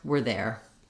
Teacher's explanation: we're there we becomes more were